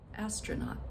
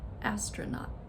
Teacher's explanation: the schwa sound is that second syllable